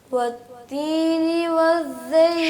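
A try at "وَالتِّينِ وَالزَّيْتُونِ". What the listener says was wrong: شاباش، بہتری آ گئی ہے. اور ذرا اس کو بہتر کریں، کلیئر کریں زا کو.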